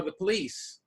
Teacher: We're stressing the last of it, lease, not the po.